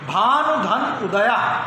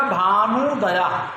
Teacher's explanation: तो भानु में छोटा ऊ है और उदया में भी छोटा ऊ है, तो दोनों ह्रस्व ऊ मिलकर के दीर्घ ऊ हो जाएंगे